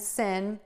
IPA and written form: sɪn (SIN)